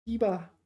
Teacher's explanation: Diba, first tone, fourth tone, diba.